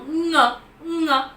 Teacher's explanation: So obviously when we talk about k, g, that those are the plosives, k, g, the plosives, and similarly for ng, as in king, it's a velar sound, but it's a nasal